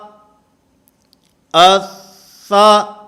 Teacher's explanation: اب اس میں ایک تو مخرج کی کہ زبان یہ سامنے ثنایا علیہ یہ دانتوں کے ساتھ ٹکرانی ہے، اور اس کے ساتھ ساتھ سا کیونکہ یہ حروف محموسہ میں سے ہے، اس لیے اس کی ادائیگی کے اندر سانس نے جاری رہنا ہے